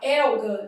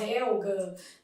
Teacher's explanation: A letra H não é pronunciada na língua portuguesa